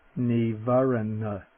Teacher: in the middle of the word and the word for hindrance the first n is the dental